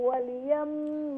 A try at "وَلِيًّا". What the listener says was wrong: وليا تشديد